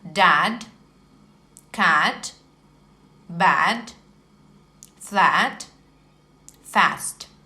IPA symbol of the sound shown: æ